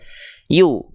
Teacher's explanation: Berarti yu-nya satu harokat aja. Yu. Nggak perlu di yu, nggak perlu di ayun.